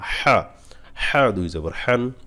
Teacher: হা অবশ্যই গলায় নিবেন